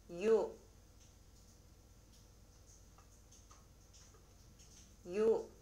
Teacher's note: 모음 요는 먼저 이 음으로 약하게 시작해서 그 후에 곧바로 오 음으로 끝내는 음이 바로 요입니다. 이때 주의할 것은 이와 오를 한 번에 발음해야 합니다. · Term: 이중모음